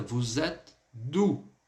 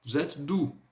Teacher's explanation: nós teremos tanto a ligação, ou seja, vou fazer o som do S com o E aí, pronunciando o som de Z